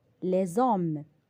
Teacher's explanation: Exemple, l'homme au singulier, au pluriel je dis les hommes. Là, nous sommes en présence d'un H muet. On fait donc la liaison.